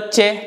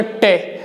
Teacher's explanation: मूर्धन्य मुंह के ऊपर ही आपका हिस्सा होगा लेकिन वो आपका तालव्य से पीछे होगा। देखो जब आपने बोला चे तो जीभ आपकी थोड़ा आगे स्पर्श थी, मैं बोलूंगा आपसे टे तो थोड़ा पीछे स्पर्श होगी